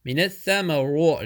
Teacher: tha very soft letter between the teeth. When you join noon with the tha, make alif and lam silent.